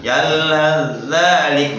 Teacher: Itu kalau wakof. Kalau wasol sa-nya hilang.